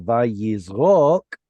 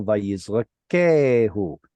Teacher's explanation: Instead of vayizrok with the stress right here, it's now vayizrakehu. Because the o lost the stress, that's why it reduced.